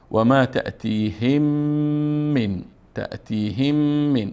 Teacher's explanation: وما تأتيهم من اینجا حکم ادغام داره چون میم ساکن است بعدش میم آمد حکم ادغام است. اینجا میم با میم مدغم میکنیم.